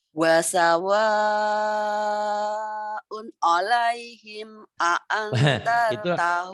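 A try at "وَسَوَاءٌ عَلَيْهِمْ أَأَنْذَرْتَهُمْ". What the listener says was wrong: Itu enggak ada seninya. Wasawa alaihim enggak ada seninya. Jadi unnya idhar tapi jangan kayak ketus. Sebetulnya tidak maksud ketus, cuman itu nadanya kayak ketus gitu ya. Wasawaun, tekanannya nggak kelihatan.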